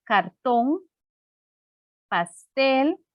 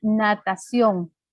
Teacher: que todas tienen el acento en la última sílaba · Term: palabras agudas